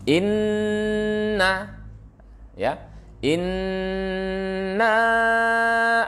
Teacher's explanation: jadi setiap Nun yang bertasydid itu maka bacaannya dengung